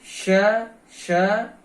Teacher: तो इस प्रकार से पहला मित्रों तालव्य श है, श इसको कहने में, उच्चारण करने में इसके थोड़ा शीटी की आवाज भी आती है, तो इसलिए भी इसको शीटी वाला श कह देते होंगे शायद।